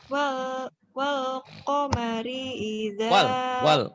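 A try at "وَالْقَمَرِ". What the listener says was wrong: Wal komari. Agak cepet ya.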